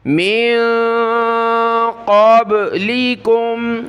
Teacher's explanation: قاف کو با کے ساتھ ملائیں گے، با پر قلقلہ ہوگا